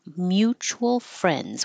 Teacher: just skip the D and make it an NZ mutual friends we have mutual friends in terab